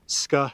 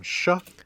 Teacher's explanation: we have palatalization. Yep. That means ska has become sha.